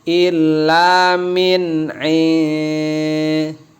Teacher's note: karena dia ikhfa di tahan lama